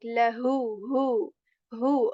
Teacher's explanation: pronounced with a portion of throat which is near to the chest